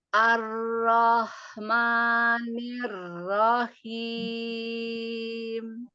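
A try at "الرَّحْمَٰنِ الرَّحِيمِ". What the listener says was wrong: Tapi ro-nya belum terangkat. Ar, ar, ar.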